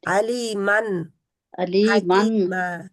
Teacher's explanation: تنوین کا آخری جو ایڈیبل نون ہے اس کے اوپر رہنا ہے نون کے مخرج میں